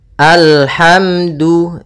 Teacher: Kemudian di sini alhamdu, da hukumnya makhrajnya pada ujung lidah menempel dengan di antara gusi dengan gigi atas